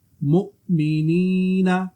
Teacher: حمزہ ساکن کو ہمیشہ جھٹکا دے کر پڑھیں، تو کیسے؟ میم حمزہ پیش مو، میم زیر می، مو می، نون یا زیر نی، مؤمنی، نون زبرنا، مؤمنین۔